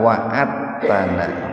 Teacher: Nah, ini membacanya jangan wa'adatana Pak, dalnya jangan dibaca kol-kolah, jangan begini wa'adatana, tapi dimasukkan ke huruf ta. Nih bagus penulis Al-Quran sekarang itu mempermudah, di atas ta-nya ada tasdid gitu. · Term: idgham mutaqarribain